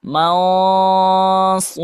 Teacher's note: Cara menebalkannya yaitu pangkal lidah diangkat ke atas. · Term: huruf tebal